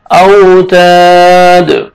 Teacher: الف مدہ ایک الف کے برابر آپ نے 1 سیکنڈ آپ نے کھینچنا ہے · دال حروف قلقلہ میں سے جب سٹاپ کریں گے، وقف کریں گے تو دال ساکن ہو جائے گا